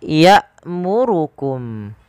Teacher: Pada lafal hamzah ya'murukum, kita baca dengan bacaan yang dia menahan nafas kita dan menahan suara kita. Karena hamzah ketika dia berharakat sukun memiliki sifat yaitu berupa jahar dan syiddah.